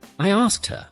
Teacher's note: in natural speech, the K and T sounds connect quickly. It sounds like asked.